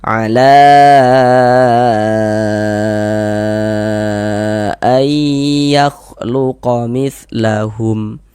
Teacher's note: la dibaca panjang 4 sampai dengan 5 harokat. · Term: mad jaiz munfasil